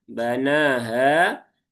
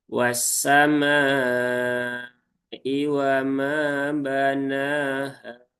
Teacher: nunnya panjang 2 harokat, haknya pun juga panjang 2 harokat